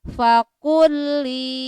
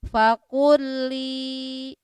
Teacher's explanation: langsung kan, tidak memakai guna ya. Fakulli, lam sukun menghadapi lam. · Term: idgham mutamasilen